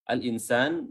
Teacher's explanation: nun ketemu sin adalah ikhfa, dan di situ tempo bacaan juga ditahan